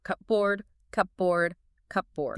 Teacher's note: Your mouth just naturally merges the p and the b sounds together. In linguistics, both of those sounds are bilabial consonants, meaning you have to press your lips together to make them. · Yeah, if you do that, you will experience a linguistic concept called assimilation. Your mouth just naturally merges the P and the B sounds together.